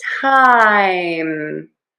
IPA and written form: taɪm (time)